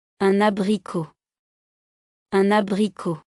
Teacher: Before a vowel, use liaison and pronounce the added N.